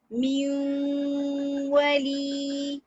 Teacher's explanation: ये मुकम्मल तौर पे मिलती नहीं है, आवाज कंप्लीट तौर पे वाव में नहीं मिलती। देखिए कैसे पढ़ेंगे इसको, म्यू वली, म्यू, नून की भी आवाज आ रही है और वाव की भी आ रही है। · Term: इदगाम इनकम्प्लीट